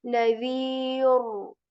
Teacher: So we will make the sound of this ra heavy and say nadhir.